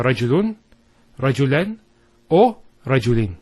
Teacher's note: So the main usage of tenwin is indefinitess. So it's giving the sound of a noon with a sukun at the end of the word